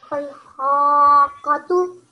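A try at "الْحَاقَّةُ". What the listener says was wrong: Prolong the ha for longer. Al-haqqatu.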